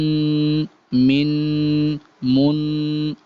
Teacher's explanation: ناک میں وائس جائے گی آپ کی، اور تقریباً ایک الف کے برابر ناک میں غنہ ہوگا ان کی ادائیگی کے وقت